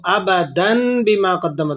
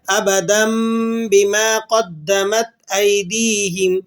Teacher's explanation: تو ابدن نہیں پڑھنا، آپ نے اس کو ابدن بما قدمت نہیں، بلکہ ہم نے اسے تنوین کی آواز کو اقلاب کر کے میم کی آواز کے ساتھ اس کو پڑھنا ہے، ابدم بما قدمت ایدیہم۔